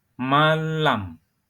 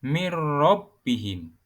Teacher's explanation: nun mati atau tanwin dilebur dengan huruf setelahnya tanpa ada suara dengung. Contohnya pada lafadz manlam dibaca malam. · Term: idgham bila gunnah